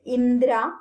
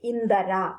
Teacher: It is the development of a vowel sound within a conjunct consonant. This is known as സ്വരഭക്തി in Sanskrit.